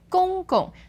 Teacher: That's first tone and fifth tone.